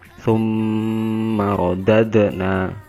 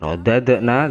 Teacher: dalnya sukun, dia dibaca dipantulkan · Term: qalqalah